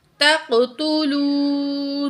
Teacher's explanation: واو ساکن ہے، ما قبل پیش ہے، واو مد ہے، 2 سیکنڈ واو کو کھینچ کے پڑھیں گے